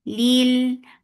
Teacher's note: for kasra give E sound attached with lam. Lam will get sifa of tawassut.